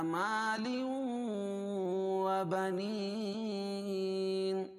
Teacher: ادغام مع الغنہ کیونکہ تنوین کے بعد حروف ادغام مع الغنہ کے 4 حرفوں میں سے واو ہے. و بنین، یا مدہ یا ساکن سے پہلے زیر ہے یا مدہ، اس کو ایک الف کے برابر کھینچ کے پڑھیں گے.